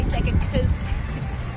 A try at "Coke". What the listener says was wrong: We don't say it that way. Just like Coke. There's only one vowel there. That's just Coke.